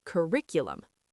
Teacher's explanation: curriculum, stress on the second syllable